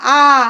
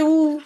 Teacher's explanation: এই যে আ বললাম, আমার ঠোঁটের জায়গাটা বড় হয়ে গেছে, এটা বিবৃত, এটা বিবৃত স্বর।